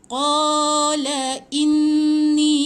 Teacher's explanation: Ombak bertemu dengan hamzah kena confirm dia 4 atau 5 harakat. Jadi inni panjang, 4 atau 5 harakat.